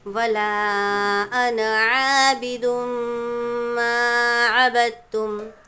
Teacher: ہمیشہ یاد رکھیں لفظ انا میں جب بھی قرآن شریف میں انا لفظ آتا ہے، اس جو نون ہے، نون کے بعد کا الف کہیں بھی ہم پڑھیں گے نہیں، لکھا ہوا ہوتا ہے لیکن پڑھا نہیں جائے گا. لفظ انا میں نون کے بعد کا الف کہیں بھی پڑھا نہیں جائے گا بلکہ ہم اس کو انا پڑھیں گے انا کے بجائے.